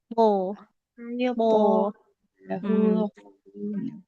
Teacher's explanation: ujung lidahnya nempel ke pangkal gigi. Seri atas cuman pangkal lidahnya dinaikkan. Karena kan tebalnya huruf, karena naiknya pangkal lidah kita ya. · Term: huruf to